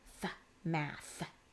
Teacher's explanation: it's unvoiced right it just comes out like a little puff of air